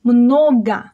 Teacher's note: the second one is unstressed, so it's reduced and pronounced as a.